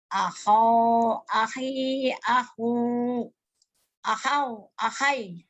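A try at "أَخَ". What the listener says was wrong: Aho, ahonya yang salah. Ahonya yang salah. Aho, akhi, aku, ahau, ahoy gitu Bu.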